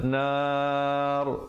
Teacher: Yang betulnya azaban, dengungkan di situ dulu 2 harakat, barulah nar, dibacakan ra-nya dengan tebal